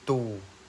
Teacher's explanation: Selain bunyi labial, bunyi lain juga dapat diabilisasikan, misalnya bunyi T yang merupakan bunyi apikoal veolar pada kata tujuan ikut mengalami pembulatan karena pengaruh vokal U sehingga terdengar sebagai tu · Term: Labialisasi